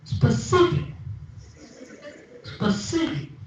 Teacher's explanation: in the second word the stress is on the second syllable